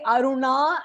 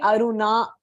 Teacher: when you say Aruna and you roll your tongue you know you're pronouncing it correctly